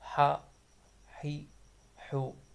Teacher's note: گلے کے درمیان سے ادا ہونے والا حرف حا